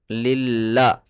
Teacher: لام کے اوپر تشدید ہے، 2 بار پڑھیں گے، اور تشدید والے حرف کو سختی کے ساتھ پڑھتے ہیں